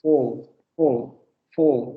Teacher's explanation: Tienes que abrir más la boca, vamos a decirlo así. Cuesta un poco más de trabajo porque tienes que abrir más la boca y mantener la labialización